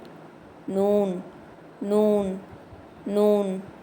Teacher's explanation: இந்த எழுத்து நுனி நாக்க மேல் பற்களோட ஈறுகளுக்கு கொஞ்சம் தள்ளி வச்சு ஓதணும்.